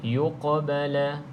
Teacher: qaf qalqalah lagi, iaitu qalqalah sughra, sedikit saja lantunannya, yuqbala. Okey, lantunan yang ringan.